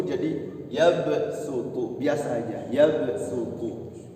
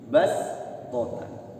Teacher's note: Tapi ini keringanan, diringankan, shadnya itu tidak dibaca shad, dibacanya tipis sin, yabsutu.